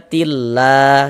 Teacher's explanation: Sebelum lafaz Allah kalau ada tanda baca kasrah nih, ada tanda baca kasrah atau harokat kasrah, maka lafaz Allah ya dibaca tarkik, dibaca tipis. Huruf lam yang di tengahnya nih, huruf lam jalalahnya dibaca tipis.